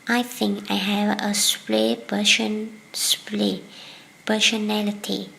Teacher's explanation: When a word ends in T and the next word begins with P, the two sounds come together with a T, changing to P.